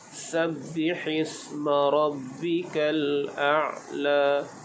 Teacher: A'la, jadi pastikan bunyi ain ini keluar di bahagian tengah kerongkong. La bila diwaqafkan menjadi mad asli panjang dua harakat.